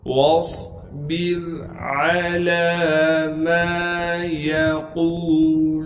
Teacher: واصبر علی ما یقولون، یا کو بغیر کھینچے پڑھیں گے، قاف کو موٹا کر کے پڑھیں گے اور قاف کو آگے واو مدہ سے ملا دیں گے۔ واو مدہ ہونے کی وجہ سے قاف کو 1 الف کے مقدار کھینچیں گے۔